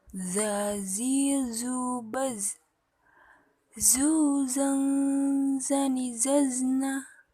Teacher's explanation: dengan ujung lidah hampir di atas dua gigi seri bagian bawah diucapkan dengan mengalirkan suara tanpa diiringi udara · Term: huruf dza